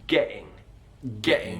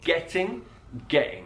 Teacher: glottal T that's where we restrict the airflow as we are saying the sound